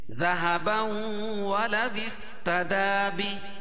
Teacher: ذهبا ولو افتدى لفظ ہے، یہ الف وصل جب ولو اور افتدا کو ملائیں گے تو یہ الف حذف ہو جائے گی، تو ولا وفتدا پڑھیں گے، وا کو فا میں ملاؤں گے، واو فاضر وفتدا بی، اور کھڑی زر کو وقف کی صورت میں ہائی ساکنہ سے بدل دیں گے، بھی سے بی.